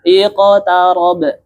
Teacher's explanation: Condong bunyi qalqalahnya itu condong kepada huruf yang berharokat fathah. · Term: condong ke fathah